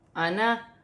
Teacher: قرآن پاک میں انا کا لفظ جب بھی آئے گا، یہ الف سے پہلے زبر ہے تو الف مدہ بن رہا ہے، لیکن اس کا الف پڑھا نہیں جائے گا۔ قرآن پاک میں جب بھی انا آئے گا تو اس کا الف نہیں پڑھا جائے گا